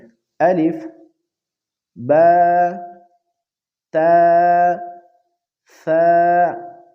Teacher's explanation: ثا زبان کی نوک اور اوپر کے دانتوں کے کناروں کے ملنے سے ادا ہوتے ہیں، اس لیے اس کے تلفظ میں ذرا کوشش کرے۔